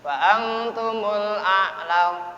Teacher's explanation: Nun mati berjumpa dengan ta dibaca ikhfa